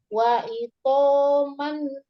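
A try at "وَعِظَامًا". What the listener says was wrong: Wa idho. Zo ada titiknya, bukan to. Wa'idho, zo.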